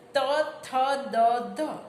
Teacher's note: જીભનું ટેરવું નીચલા દાંતને અડશે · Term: દંત્ય વ્યંજન